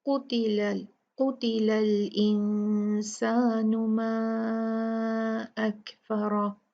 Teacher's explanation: सीन उन 15 हरूफ में से एक है जब नून साकिन या तनवीन उससे पहले आता है तो हम नून जो है साकिन को साफ नहीं पढ़ते, उसका इजहार नहीं करते बल्कि उसको छुपाया जाता है, उसको कहा जाता है इख्फा। उसको 2 काउंट गुन्ना के साथ पढ़ा जाता है।